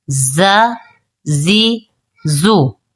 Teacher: سیٹی کے ساتھ پڑھیں گے کیونکہ یہ حروف صفیریہ میں سے ہے